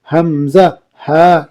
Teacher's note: حلق کے نیچے والے حصے سے ادا ہوتی ہے۔